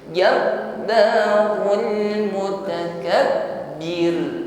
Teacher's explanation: ditutup dengan huruf ro-nya takrir, ya, tetap bergetar namun getarannya tipis karena sebelum ro di sini ada harokat kasrah. Mutakabbir, getarannya ringan.